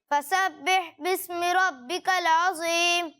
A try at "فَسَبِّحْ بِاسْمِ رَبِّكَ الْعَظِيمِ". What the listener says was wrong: اچھی کوشش کی لیکن وہی غلطیاں ہیں جو میں نے پہلے بھی بتائی کہ بہ نہیں ہے، فسبح، ٹھیک ہے.